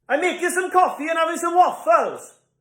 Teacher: It's so rhythmic. All the syllables have the same stress, and this feature is unique to a very particular part of the UK.